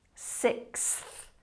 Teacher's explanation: your tongue has to be up at the back to make the K it comes forward for the s and then through the teeth quickly to make the th